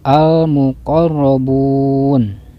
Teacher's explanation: Sebab alif lam menghadapi huruf mim, cirinya ada tanda sukun. Lalu huruf ro-nya dibaca tafkhim atau tebal sebab berharokat fathah